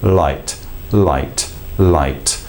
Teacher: tip of the tongue literally works from the top of the mouth behind the front top teeth and drops gracefully down behind the bottom teeth